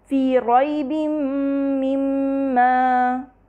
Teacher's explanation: با کے نیچے کسرتین ہے جو کہ اگلے میم سے مل رہا ہے، اس کی ہمیں نون کی آواز بھی نہیں آ رہی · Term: تنوین کے ادغام